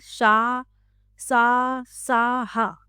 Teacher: उच्चारण के समय दो अंग इतने पास आ जाते हैं कि हवा घर्षण के साथ बाहर निकलती है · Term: संघर्षी व्यंजन